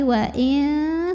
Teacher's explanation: cara baca nun sukunnya ini adalah samar-samar, siap-siap ke ta disertai dengungan. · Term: ikhfa aqrab